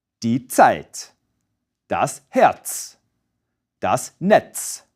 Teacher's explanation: German Z is actually two sounds pronounced at the same time, a T and a S.